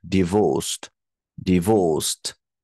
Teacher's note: divorced second syllable is stressed